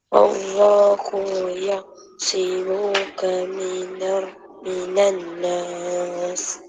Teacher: Nun sabdu tu wajibul gunnah.